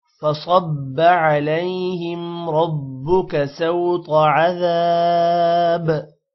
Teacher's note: عذاب ذال کے بعد الف ہے تھوڑا سا لمبا کریں گے اور با پر قلقلہ کرنا ہے